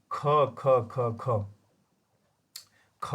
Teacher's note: ख अघोष वर्ण है इसमें कंपन नहीं है